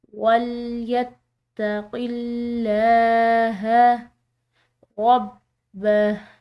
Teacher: یہاں پر لفظ اللہ کی لام باریک ادا کی جا رہی ہے کیونکہ یہاں پر جو پیچھے والا حرف ہے یہ مکسور ہے